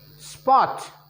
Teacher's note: ओ बोलने के लिए लिप्स को गोल करना पड़ेगा, राउंडिंग करके ही इसको बोल पाएंगे